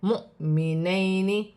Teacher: واو خالی ہے، جزم کی حرکت حمزہ پر ہے، حمزہ کو جھٹکے کے ساتھ پڑھا جائے گا